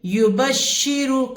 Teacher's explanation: را کو یبشرو کی موٹا پڑھیں گے کیونکہ پیش والا ہے